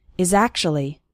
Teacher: the words is and actually kind of blend together